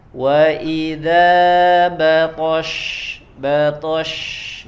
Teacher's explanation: huruf shin ya keluar dari tengah lidah, ya dan disempurnakan dengan sifat tafasyi, menyebarnya angin